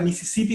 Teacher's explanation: les va salir con una s super forzada como silbante como que casi que no salga